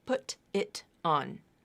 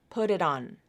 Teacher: the flap is like a very fast D sound in English it's not a true D